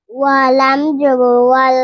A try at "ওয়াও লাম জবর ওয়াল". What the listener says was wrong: ওয়া হবে না, ওয়াও ঠোঁট গোল করে, ওয়াও লাম জবর ওয়াল,